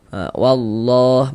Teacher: Di sini lafaz Allah dibaca panjang